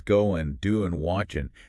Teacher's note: notice you dropped the G on going there, too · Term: dropping the final G